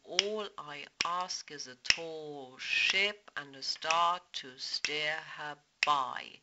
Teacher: Now we have two iambs again, and then a pyrrhic, so two unstressed syllables, a spondee, two stressed syllables, and then shifting back into the iambic rhythm again.